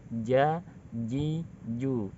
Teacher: sifat yang harus dimiliki huruf jim dia adalah jahar, tidak banyak nafas yang keluar.